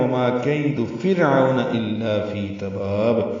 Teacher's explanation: فرعون را باریک عین وسط حلق سے نکالیں گے